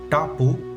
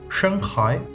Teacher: Las retroflejas, poco conocidas por los europeos, que se hacen doblando la lengua hacia atrás.